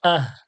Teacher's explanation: আহ বলবো নি, বড় হার মতো উচ্চারণ যেন না আসে, এটা ছোট হা। আহ পাতলা করে কণ্ঠনলীর শুরু হতে আহ।